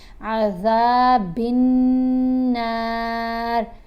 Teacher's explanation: बा को जब नून से मिलाएंगे तो गुन्ना करते हुए मिलाएंगे